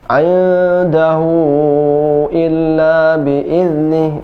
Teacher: hu-nya dipanjangkan 5 harokat ya, kalau misalnya itu bertemu dengan hamzah hak dhamirnya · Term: mad silah tawilah